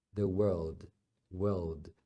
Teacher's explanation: eles alongam o som do W sem fazer o r como o americano Faz